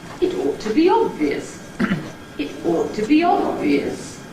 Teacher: The pitch starts low, rises gradually throughout the head. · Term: rising heads